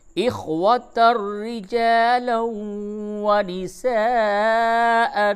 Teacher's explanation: تنوین کے بعد را ہے، ادغام بلا غنہ ہوگا